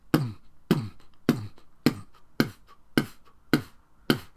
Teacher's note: But if I keep my mouth closed as much as I can and then try to make that sound without actually opening my mouth to the vowel, boom, boom, boom, boom, boom, boom, boom, the more I take away the vowel, the more it just sounds like a big thump